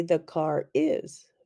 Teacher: in some dialects the r is linked to other words